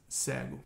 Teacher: The word for blind is pronounced with an open E in Portuguese.